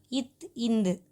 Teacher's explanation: மேல்வாய் பல்லின் அடியை நாக்கின் நுனி பொருந்துவதால் பிறக்கின்றன